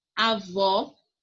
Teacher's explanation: Avó, o vó é a sílaba mais forte.